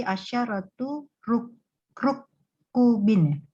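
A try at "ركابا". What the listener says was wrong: Ka ya ada alif rukabin. Aywa rukabin ya. Ini agak panjang diayunkan 2 harokat ya rukabin ya ada alif.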